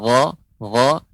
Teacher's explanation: bukan pangkal lidah tapi tenggorokan paling atas